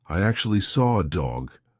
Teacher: I can't see an R but I said an r and that is because we have a feature called an intrusive R